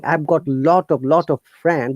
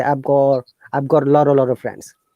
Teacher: in some parts of the united kingdom people replace the t sound by r